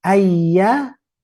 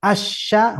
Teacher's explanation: Konsentrasi kalau tadi ayya tengah-tengah ya, dengan asya, nah tinggal kuatkan jimnya, aja. Coba bandingkan ayya lembut, asya hembus udara, aja. Makhrajnya sama.